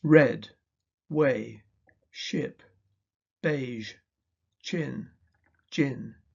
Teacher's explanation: The phonemes r, w, sh, j, ch, and j are usually pronounced with rounded lips, as in red, way, ship, beige, chin, gin.